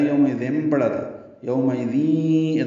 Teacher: اب دال کو یا سے ملائیں گے، یومئذین ہو جائے گا، پہلے یومئذین پڑھا تھا، یومئذین ادغام ناقص مع الغنہ۔